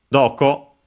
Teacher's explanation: The ko, so, a are unaccented, while do is accented on the first syllable.